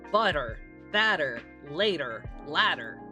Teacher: in American English, because of allophony, sometimes when it is in the middle of words, it's pronounced like an alveolar tap, very similar to the ere in Spanish.